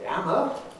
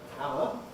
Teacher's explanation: wherever you get an H in received pronunciation, an H sound, glottal fricative, you don't in Cockney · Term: H dropping